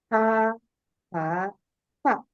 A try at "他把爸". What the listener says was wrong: Ya, P lebih jelas aja ya, PH. Dia bacanya PH, jadi ada angin ya. Pa, ya, nada dua.